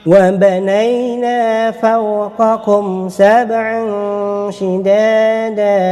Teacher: tanwin ataupun fathahatain bertemu dengan huruf shin menjadi ikhfa hakiki, 2 harakat dengung